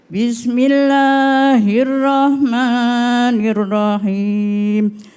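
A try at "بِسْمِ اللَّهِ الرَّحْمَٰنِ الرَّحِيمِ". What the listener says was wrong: Cuma tadi a'udzunya sama bismillahnya bisa diperbaiki lagi Bunda ya. Bismillahirrahmanirrahim. Pakai ha. Rahmanirrahim.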